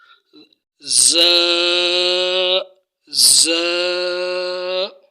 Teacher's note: زا کے اندر کہ صفت صفیر ادا کرنی ہے